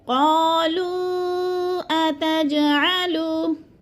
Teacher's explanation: قالو پہ جو مد ہے مد منفصل 4 الفی مد ہے، اس کو 4 حرکات کے برابر ہم نے لمبا کر کے پڑھنا ہے، یعنی کھینچنا ہے.